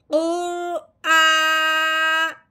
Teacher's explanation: तो फिर कैसे पढ़ेंगे, हमजा खड़ी जबर आ, ठीक है। हमजा बनाया, फिर हमने इसको एक अलिफ के बराबर लंबा किया